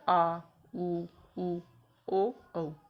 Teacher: पश्च स्वर में पीछे से कंठ की ओर से आती है,